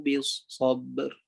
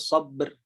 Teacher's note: Pertama tu mestilah lantunkan ba. Tapi lantunkan ba tu tiadalah gap dengan ra tu.